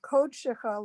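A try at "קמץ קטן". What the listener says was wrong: I've learned it's aw, Kod Shecha, not Ko, Kod Shecha.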